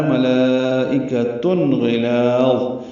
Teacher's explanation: غین پر پڑھیں گے، لام باریک پڑھیں گے